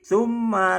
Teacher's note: mimnya ditahan tiga rakaat